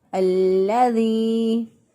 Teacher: اس کو لمبا کریں گے، پھر ہم اس کو پڑھیں گے الذی، اور اس یا کو ایک الف کے برابر لمبا کر کے پڑھیں گے۔ ایک الف کا مطلب یہ ہے انگلی جو ہے وہ بند ہے، بند انگلی کو آہستہ آہستہ کھولیں، تو جتنا کھولنے میں وقت لگتا ہے اتنا وقت جو ہے اس کو ادا کرنے میں لگے گا۔ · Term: یا مدہ